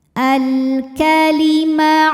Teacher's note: Karena alif lam menghadapi huruf qamariah yaitu kaf, maka lam sukun dibunyikan dengan jelas atau biasa disebut dengan izhar qamari.